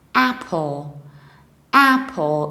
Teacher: You have a very broad A at the very beginning.